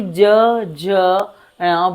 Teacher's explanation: जैसे ही ज झ ण बोलेंगे तो उसमें कंपन गले का बढ़ जाता है।